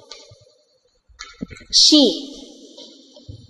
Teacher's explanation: âm này nó giống như chữ S nhưng dài hơn một chút âm này là âm s nặng hơn một chút